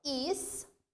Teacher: Proparoxítona, sílaba tônica, to.